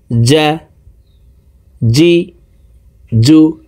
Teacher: জিমের উচ্চারণ জিব্বার মধ্যখান থেকে হবে